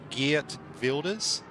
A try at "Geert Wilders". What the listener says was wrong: almost. Yeah, and then just like screw up your tongue while saying the G. Geert.